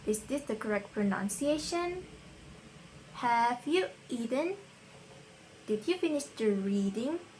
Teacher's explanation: The second pattern is rising. So this rising pattern is typically used in yes or no questions, uncertainty, to be polite, and for listings except for the final item.